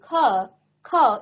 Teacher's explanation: इसके उच्चारण में वायु जो है थोड़ा रुककर मुख से बाहर निकलती है, क्योंकि हम पहले क कहते हैं फिर अ कहते हैं, क आधा क और क क उच्चारण क्या आ रहा है, अ का।